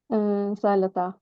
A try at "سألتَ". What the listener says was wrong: So you are not pronouncing it correctly. It is sa'alta. It's not sa'alata. It's sa'alta. Sa'alta. Sa'alta.